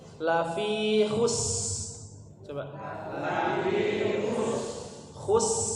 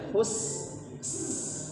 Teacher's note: Betul, karena huruf sin, huruf shad itu termasuk huruf yang dia zamannya panjang waktunya ya. Jadi termasuk huruf-huruf yang punya sifat rakhawah ya. Suaranya panjang.